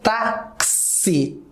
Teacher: Quando eu falo táxi, galera, esse X, ele tem um som de KS